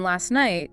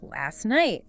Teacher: when you combine last night, that final T, it often just disappears